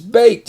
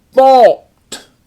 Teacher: the consonant in front of the Ed in all of these words is one of the quiet cousins on the phono visual chart or a voiceless or unvoiced consonant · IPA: /t/